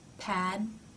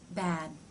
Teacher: p is unvoiced meaning only air passes through your mouth and b is voiced meaning you're making a sound with your vocal cords